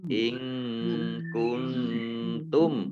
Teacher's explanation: Burhanakum, in kuntum shodiqin. Nun sukun bertemu dengan huruf kaf, ya. Bacaan ikhfa, ya. Bacaan ikhfa dibaca samar-samar.